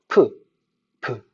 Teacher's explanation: 네, 많이 울리면 제대로 된 건데 우리 한국 사람들은 그냥 평상시 발음하던 대로 한번 발음해 보세요. 프, 브. 차이가 없어요. 왜요? 우리 한국어에서는 브가 바로 무성음이기 때문입니다.